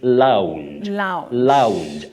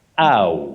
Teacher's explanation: There is what we call a diphthong, or diphthong if you like, and that is the glide on two vowel sounds.